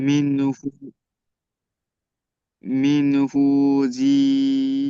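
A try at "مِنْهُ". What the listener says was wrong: জি নয়, জি নয়, জিম এবং খ। হ্যাঁ হ্যাঁ, ঠিক, জিম এবং খর মধ্যে পার্থক্য নুক্তা, উপর আর নিচ। মিনহু ঠিক বলেছেন। মিনহু, মিম নুন জের মিন।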